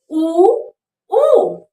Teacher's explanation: उ और उ का उच्चारण स्थान ओठ है। आप बोलकर देखिए उ, तो इसका जो उच्चारण स्थान है वो ओठ माना जाता है।